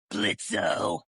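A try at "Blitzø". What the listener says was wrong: The O is silent now, bitch.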